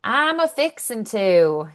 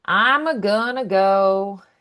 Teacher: So, they add this little uh before something. Um, they put it before verbs. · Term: affixen